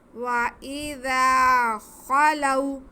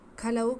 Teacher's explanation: تھوڑا منہ کھول کر کے حلق کے شروع والا جو حصہ ہے منہ کی طرف کا وہاں سے ادا کرنا ہے. کھلو کہیں گے تو وہ لفظ غلط ہو جائے گا, وہ لفظ خا نہیں کاف ہے کی بنی جو اردو میں ہوتا ہے وہ والا لفظ ہوتا ہے.